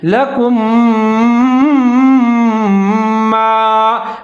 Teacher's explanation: دونوں میم کو ساتھ میں ملا کے پڑھیں گے، ادغام کریں گے، آواز کو ناک میں لے جائیں گے